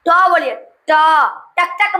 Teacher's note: दोस्तों इसका उच्चारण स्थान मूर्धन्य है